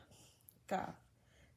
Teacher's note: The back of the tongue touching the last part of the mouth is makharij of Kaf.